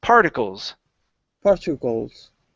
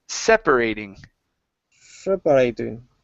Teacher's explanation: the stress is at the very beginning instead of particles it's particles particles good one more time particles